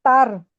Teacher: लेकिन ता तो मुफखम नहीं है ना। ता तो बारीक लेटर है। रा मुफखम है। ता सॉफ्ट है।